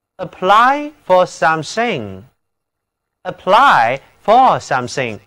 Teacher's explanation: 这里字母▁y▁读作圆口的双元音▁i